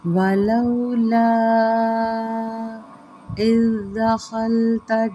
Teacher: وَلَوْلَا، لو لین کا قاعدہ ہے، لا یہاں پہ دیکھیں چھوٹی سی مد پڑی ہوئی ہے اور اس مد کے آگے حرف آ رہا ہے حمزہ، یعنی کہ الف ہے نیچے زیر ہے، یہ حمزہ بن جاتی ہے۔ یہاں پہ چھوٹی مد کے بعد جب حمزہ آ جائے تو یہاں پہ مد منفصل کا قاعدہ لگتا ہے، 3 سے 4 حرکات اس کو کھینچیں گے۔